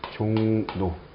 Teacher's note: 이응 뒤에 리을이 뭐로 바뀌죠? 니은으로 바뀝니다. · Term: 순행동화